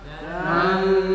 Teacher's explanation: Dan suara nunnya samar karena bacaan ikhfa. Tan tidak dibaca dengung.